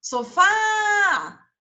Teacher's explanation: qual que foi a sílaba que eu demorei a maior parte do tempo chamando o fá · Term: oxítona